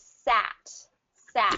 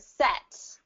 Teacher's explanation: sat you drop your jaw a little bit more it has more of that hollow sound